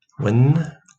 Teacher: we've got a vowel u and then a consonantal version w